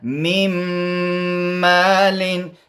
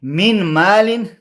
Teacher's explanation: څنګه به وایم پوزه کې به وایم نو څنګه میم مالین میم به په میم کې نه باسم یعنی ادغام به کوم شاد به ورکوم او دویم دا چې غنه به هم کوم ځکه میم په پوزه کې ویل کېږي د مخرج خیشوم دی · به ورکوم او دویم دا چې غنه به هم کوم ځکه میم په پوزه کې ویل کېږي د مخرج خیشوم دی دا په پوزه کې ویل کېږي نو ځکه به دغسې کوم چې غنه به هم ورکوم نو